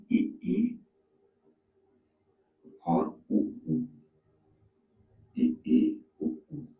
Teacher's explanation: इसको बोलने पे हमारा मुख जो है ओठ जो है वो बिल्कुल खुलेंगे नहीं। इसको हम दबा के बोल सकते हैं। · इ ई उ ऊ लगभग हमारा पूरा का पूरा मुख बंद होता है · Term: संवृत